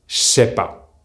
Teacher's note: the sound JJ and SS become SH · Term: merge